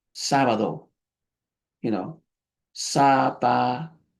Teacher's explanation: Now sometimes you won't hear that D like David, or depending on where the D is, it may sound like a TH.